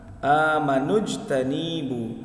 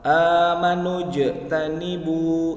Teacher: huruf jimnya dibaca memantul, masuknya ke dalam hukum bacaan qalqala